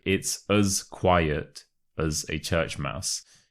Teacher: the as becomes a us